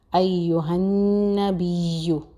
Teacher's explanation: نون مشدد ہے اس پہ غنہ ہوگا اور غنہ کی جو ڈیوریشن ہے، غنہ کا ڈیوریشن جو ہے نا ایک الف کے برابر ہے